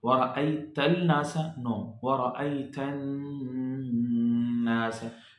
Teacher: Firstly, we are joining the tha sound with directly to the noon, because noon is among the sun letter, shamsi letter. So lam voice would be hidden. It would be in written but not in the recitation.